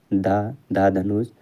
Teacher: दंत वत्सर्य महाप्राण घोष व्यंजन वर्ण का उदाहरण है।